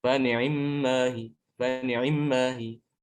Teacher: Jadi orang yang tidak memperhatikan itu akan mengira kalau nganya itu dibaca sukun. Padahal bukan dibaca sukun, dia dibaca kasroh, cuma kasrohnya dipercepat ya. Tidak dibaca satu harokat, tapi kurang dari satu harokat. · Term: ikhtilas